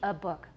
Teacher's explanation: short and it's a schwa